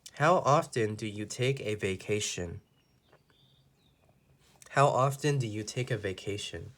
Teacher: how is a w question so we know that the intonation your voice goes down on the last word